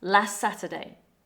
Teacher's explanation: First, listen to last Saturday. The word last ends with a t sound, but notice that native speakers often don't fully pronounce that T. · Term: consonant cluster